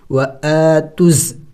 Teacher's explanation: پھر زا کے اوپر چونکہ شد ہے اور شد والے حرف کو پچھلے والے حرف کے ساتھ ملا کے پڑھا جاتا ہے، تو ہم تا کو زا کے ساتھ ملائیں گے، وا اور الف کو نہیں ملائیں گے، اس لیے کہ ان کے اوپر کوئی حرکت نہیں ہے، تو ان کو پڑھیں گے نہیں.